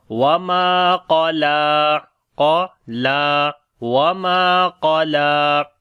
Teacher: ہے، قاف کو موٹا پڑھیں گے، حروف استعلاء میں سے ہے، لام کو بھی لمبا کریں گے، اس کے اوپر کھڑی زبر ہے لیکن باریک پڑھیں گے